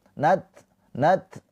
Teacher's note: Ta sukun mempunyai sifat hames. Ada percikan nafas.